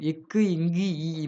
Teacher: நாவின் அடி, அன்னத்தின் அடி. நாவின் முதற் பகுதி, அன்னத்தின் அடிப்பகுதி.